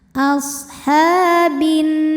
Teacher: Sebab huruf ha berbaris fathah panjang. Maka huruf ha kita panjangkan dua harakat. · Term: mad thobi'i muqaddar